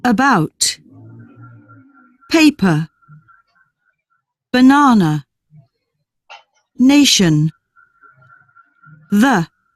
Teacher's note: And the sound is middle, so you have to focus and pay attention where you are going to put your tongue, because that's the thing. The tongue is in the mid and the center of the mouth. · This vowel is in the middle. The lips are relaxed and neutrally spread. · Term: schwa, the schwa